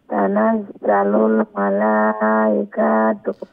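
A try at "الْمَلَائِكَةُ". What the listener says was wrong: আর মালাইকাতু কা লম্বা হবে, কাফের উপরে যে জবর আছে এই জবরটি কি লম্বা হবে উচ্চারণ? না, হ্যাঁ, তো মালাইকাতু বলবেন না, মালাইকাতু এইরকম, মালাইকাতু এরকম।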